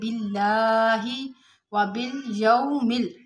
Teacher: باللہ، باللہ میں لام کے اوپر کھڑا زبر ہے اور لفظ اللہ کے لام سے پہلے زیر ہے، تو اس کو باریک پڑھیں گے